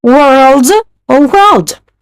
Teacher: For a standard one, just forget letter A. For the vowel sound, mix Spanish letters E and O and make them longer.